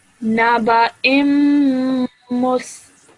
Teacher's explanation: straight away joining the alif to the meme, holding that meme sound in your nose for 2 seconds. Immus, إمس naba immus.